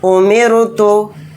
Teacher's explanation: تو دیکھیے یہاں پر رائے ساکنہ سے پہلے زیر اصلی ہے تو اس لیے اس رائے ساکنہ کو باریک پڑھیں گے